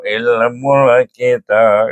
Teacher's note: Kita akan baca dengan qalqalah kubra. Okey. Jadi lantunnya kuat eh.